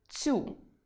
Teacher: Третє порушення – це вимова слова «цю», де «ц» має звучати м’яко перед наступним йотованим